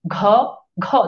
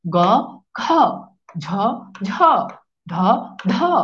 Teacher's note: দেখেন আপনি এখানে একটু হাত রাখেন, ঘ ঘ, দেখেন হালকা কেঁপে উঠে আমাদের স্বরতন্ত্র। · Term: ঘোষ বর্ণ